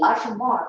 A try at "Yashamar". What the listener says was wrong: You mean Yashamar? It sounds like you're saying Shamar. It's Yashamar, okay?